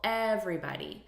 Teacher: we're stressing the first syllable